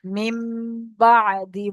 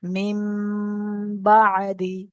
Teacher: নুন সাকিনের আওয়াজকে মিমের দ্বারাই পরিবর্তন করে এক আলিফ পরিমাণ গুণনা করে পড়তে হয় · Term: ইকলাব